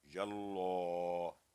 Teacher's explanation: لام الجلالہ یعنی اللہ کے نام کی جو لام ہے اس سے پہلے حرف یا پر فتح ہے، زبر ہے، تو یہ موٹا کر کے پڑھا جائے گا